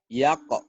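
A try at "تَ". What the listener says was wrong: Yak di mana? Titiknya di atas. Ntar ke atasnya tuh Jo. Bari ke atasnya dikit.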